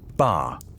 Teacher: A sharp falling tone, ba, is a command.